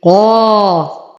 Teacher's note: أعطي القاف أعلى درجات التفخيم فهو مفتوح وبعده ألف